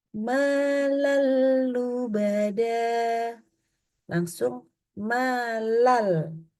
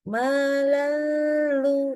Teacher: Sama sekali tidak ada huruf nun atau apapun yang tertinggal dari nun di sana. Malalubada, ya, jangan jadi ada kayak NN-nya. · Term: melebur, idgham